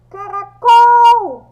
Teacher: quando eu pronuncio, o som do col é o mais forte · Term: sílaba mais forte